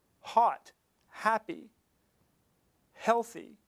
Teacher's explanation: So in the case of the word huh, hot, happy, healthy, that first sound, that H sound, is an example of a glottal sound that's also a fricative